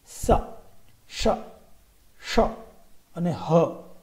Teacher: આ ઉષ્માક્ષરો એટલા માટે છે કે એમાં બોલતી વખતે ઉષ્મા એટલે કે હવા એ બહાર આવે છે.